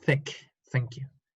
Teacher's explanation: Y los unvoiced, que son los claros, son los que no vibran en las cuerdas vocales. Este es un sonido unvoiced, no vibra, porque es, pasa el aire, pero en mi garganta no pasa nada.